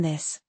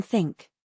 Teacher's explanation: So, this vibrates, think doesn't, similar to Z and S